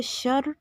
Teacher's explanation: شرین یہاں پہ را باریک، را کے نیچے زیر ہے، شین کو را کے ساتھ سختی سے ملائیں گے شد کی وجہ سے